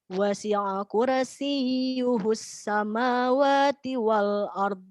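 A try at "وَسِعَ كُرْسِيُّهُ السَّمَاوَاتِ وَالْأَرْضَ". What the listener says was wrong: Roknya tebalkan. Wasi'a kursi.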